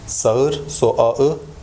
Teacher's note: So the first word would be pronounced as ağaç, and bu, and the fifth one will be eye. So if the following vowel is different from the preceding one, then the soft G triggers the articulation of a diphthong